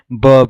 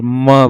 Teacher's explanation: हमारा प वर्ग है देखि प होठों से हो रहा है दो हमारे जो होठ है वो आपस में मतलब मिल जा रहे हैं